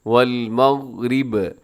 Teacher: یہاں غین کو قلقلہ ہونے سے بچائیے گا، اس کی آواز کو ڈبل نہیں کرنا ، ایسے آواز بند ہو جائے، والمغرب۔ اب یہاں ہم وقف